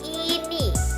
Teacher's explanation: lidah di depan dan tinggi seperti bunyi i kata ini